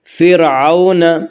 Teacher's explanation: واولین کو نرم آواز کے ساتھ جلدی پڑھیں گے۔ فرعون، وَأَنْتُمْ، وَأَنْتُمْ میں اخفا ہوگا۔